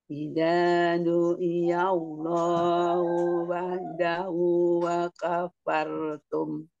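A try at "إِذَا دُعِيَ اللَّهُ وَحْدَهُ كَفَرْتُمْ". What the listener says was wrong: Ya, enggak ada wau-nya. Kafartum.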